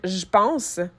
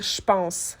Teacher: Et par la force des choses, parce que c'est plus facile à prononcer, on va pas dire « je pense », on va dire « je pense ». Fait que le J devient plus un ch, un CH, si on veut, le son ch.